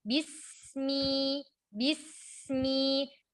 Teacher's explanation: perpindahan makhraj dari huruf sin sukun ke mim perlahan-lahan supaya tidak memantul suara sinnya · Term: rokhwah sin